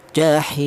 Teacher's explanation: boleh dibaca tul. Tul itu artinya panjang yaitu panjangnya tiga alif atau enam harakat · boleh dibaca tawas artinya sedang yaitu dua alif atau empat harakat